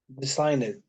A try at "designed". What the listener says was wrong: This is not S, but this is Z. Design. And notice that the N is voiced. So I have to delete the E sound and I have to keep the D. So it will be what? Designed.